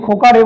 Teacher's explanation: এই এ ধ্বনিটা দীর্ঘক্ষণ ধরে উচ্চারিত হতে থাকে এবং উচ্চারণের রেস দীর্ঘক্ষণ থাকে, তাই এই এ ধ্বনিটাকে আমরা বলি প্লুতস্বর।